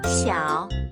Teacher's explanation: We need to use the third tone, or dipping tone when pronouncing. 小 Start at a neutral tone, then dip to a lower pitch, before ending at a higher pitch.